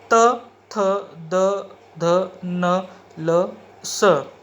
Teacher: इसका उच्चारण करते समय दांत और जीभ का संबंध आता है, इसलिए ये आते हैं दंत्य श्रेणी में।